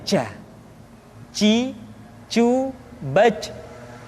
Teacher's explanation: Kesalahan yang sering muncul ketika mengucapkan huruf ja adalah mengalirnya nafas. Ja, ada nafas yang mengalir.